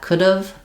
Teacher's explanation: And try to just notice that making sure that you're being very reduced in your contraction rather than sounding like could have or shortened version of have. You really want just that could have, very short on the v.